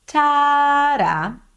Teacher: The first note was higher in pitch. Tada. And they're longer.